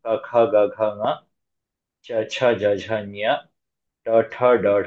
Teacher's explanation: ಸ್ಪರ್ಶ ಅಕ್ಷರಗಳು ಸ್ಪೃಷ್ಟ ಪ್ರಯತ್ನದಿಂದ ಉಚ್ಚರಿಸಲ್ಪಡುತ್ತವೆ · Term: ಸ್ಪರ್ಶ ವ್ಯಂಜನ